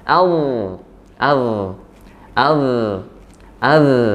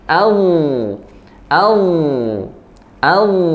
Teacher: pangkal lidah nya terangkat sehingga menimbulkan ketebalan huruf